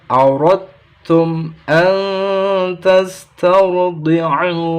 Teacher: ro langsung masuk ke huruf ta. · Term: Bacaan idgham